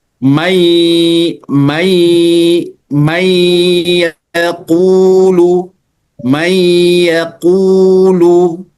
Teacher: Sedangkan idgham ini karena dia sudah dileburkan maka tidak lagi dibaca dengan jelas ya.